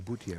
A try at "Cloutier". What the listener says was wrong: Cloutier with a C. Cloutier.